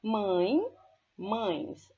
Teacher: Observem que eu tenho aí um ditongo nasal em mãe, ain, eu apenas acrescentei o S para pluralizá-lo, tá?